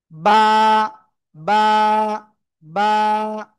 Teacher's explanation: নিচের ঠোঁটের পেট, উপরের এই এই ঠোঁটের পেট, অর্থাৎ দুই ঠোঁটের ভিজা অংশ থেকে আমরা এই অক্ষরটা উচ্চারণ করব।